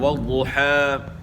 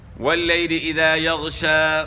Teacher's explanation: کھڑا زبر وقف میں کھڑا زبر ہی پڑھا جائے گا، اس حرف کو آپ نے ساکن نہیں کرنا. اس طرح والضحى آپ وقف کر رہے ہیں، سانس بھی لے رہے ہیں لیکن کھڑا زبر پڑھ رہے ہیں، اس کو آپ ساکن نہیں کر رہے.